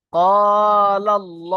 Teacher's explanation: আল্লাহ শব্দের লাম মুশাদ্দাদের পূর্বে জবর এসছে আল্লাহ শব্দকে পুর করে পড়তে হবে